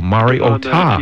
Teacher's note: the accent that was put on the phonetic spelling was on the last syllable